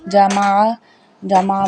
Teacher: عین جو ہے وہ عین حلق کے درمیان والے حصے سے ادا ہوتا ہے جسے ہم بولتے ہیں وسطی حلق۔